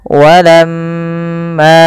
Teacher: usahakan kita menahan daripada bunyi suara mim, karena di sini dilihat mimnya berharakat tasydid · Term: gunnah